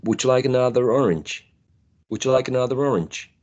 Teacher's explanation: would make that link with the r and the O excellent we're talking about the linking R here